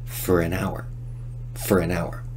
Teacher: In rapid speech, we de-stress for and reduce the vowel to just fur.